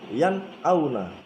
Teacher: Yan auna dibaca yan auna, yan auna. Nun sukun dan hamzahnya terputus, jelas maksudnya. Yan auna. Tidak boleh dibaca dengung. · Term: idhar